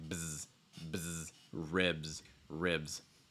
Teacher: that BS sound, I notice it's going to be voiced. It's like bzz, bzz, ribs, ribs.